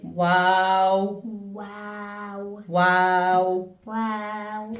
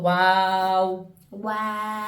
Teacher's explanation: the sound of the wow letter comes when the both upper and lower lip are made round and they meet but not completely